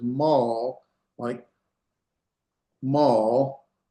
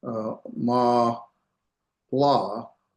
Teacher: A silent shavah would just be mal, and that's one syllable. You make one sound.